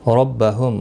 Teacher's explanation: را زبر کی وجہ سے پر پڑھا جائے گا۔